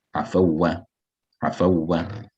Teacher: Letter of lean is when the wow is sakin. Yeah, the wow is mushaddad. So there's no extension of the sound.